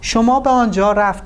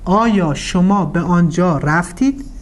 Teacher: changing the intonation using a rising intonation